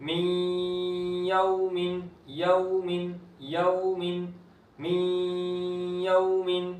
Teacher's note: من یوم، من یوم، نون ساکن کے بعد یا ادغام ہو رہا ہے اور واو ساکن سے پہلے زبر تو واو لین یہاں پر بغیر کھینچے نرمی کے ساتھ